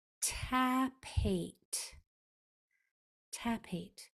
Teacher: The only letters that were making any sound, any vocal cords being used was only on those vowels. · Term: voiceless consonants